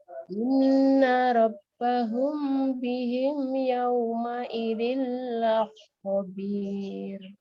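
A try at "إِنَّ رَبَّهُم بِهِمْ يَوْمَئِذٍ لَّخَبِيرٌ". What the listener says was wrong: Kha-nya kurang ya. La khabir.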